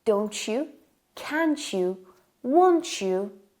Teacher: And we have another similar connected speech, which is when T and Y are connected, they have a Ch sound.